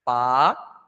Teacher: Aqui tem o hiato, ó. O A e o I se separaram.